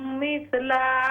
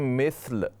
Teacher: अगर वक़फ़ करते हैं ना तो मिस्ल लाम को साकिन कर लें।